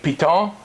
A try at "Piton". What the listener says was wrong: It's got a French pronunciation, a Piton. You drop the N.